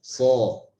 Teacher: idbaq ini kita agak menutup celah mulut sehingga menyebabkan suara huruf ini akan lebih tebal.